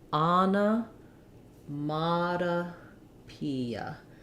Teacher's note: every other syllable it's clear it's longer shorter longer shorter and longest shorterest the stress is on the P syllable so